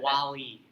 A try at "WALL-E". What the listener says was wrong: Wall-E. I thought it was Wall and then E. Not Wally.